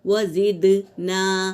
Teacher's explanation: دال پر سکون ہے تو یہاں قلقلہ ہوگا، آواز ٹکرائے گی